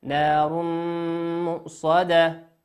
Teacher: وقوله عز وجل: نار مؤصدة، تنوين أتى بعده حرف الميم، والميم من حروف الإدغام بغنة، يغن بمقدار حركتين